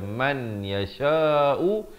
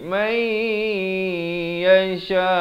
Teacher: Manakala di sini idgham bi gunnah, nun mati bertemu ya, nunnya tidak bertanda. Jadi di sinilah dimasukkan beserta dengung 2 harakat, daripada man yasha'u jadi may yasha, 4 atau 5 harakat.